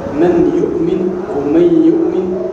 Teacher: فتخرج النون من مخرج الياء لانك ابدلت منها في حال الادغام ياء غير انك تبقي الغنه خارجه من الخياشيم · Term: ادغمت